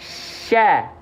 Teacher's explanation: attafasyi itu artinya menyebar udara dari mulut